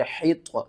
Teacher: آپ نے ہا کو آپ نے طا کے ساتھ ملانا ہے، طا حروف مستعلیہ میں سے ہے، اس کو ہم نے موٹا کر کے پڑھنا ہے